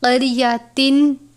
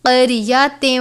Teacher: یہاں پر ادغام کا قاعدہ لگتا ہے. تنوین کو واو مشدد سے ملا کر غنہ کر کے پڑھیں گے. قریۃن نہیں پڑھنا بلکہ قریۃ، واو کی آواز کے ساتھ ادا کرنا ہے.